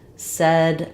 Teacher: my mouth is not quite as open and my tongue is a little bit flatter